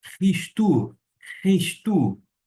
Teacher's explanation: Se a pronúncia adotada por este erasmiano, uma ligeira adaptação, eu vou fazer um som mais arrastado do CH alemão